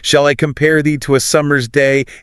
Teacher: It's this relentless driving rhythm. It forces you to stress every second syllable. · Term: alternating stress